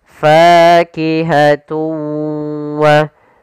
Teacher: Cara membacanya yaitu suara tanwinnya kita masukkan langsung ke huruf wau dan kemudian kita tahan gunahnya. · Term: idgam ghunah